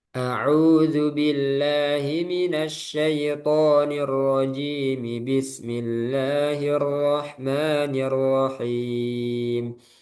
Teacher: Nah, kalau digabung, mi-nya dibaca ya. Jadi kasrohnya itu dibaca.